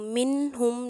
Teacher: اظہار ہو رہا ہے، گناہ نہیں ہوگا بلکہ نون کی آواز واضح نکلے گی، اس کے مخرج پر جائیں گے، یعنی کہ زبان کی نوک مسوڑوں پر لگے گی